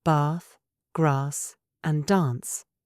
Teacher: In the UK, we use a long A for words like bath, grass, and dance.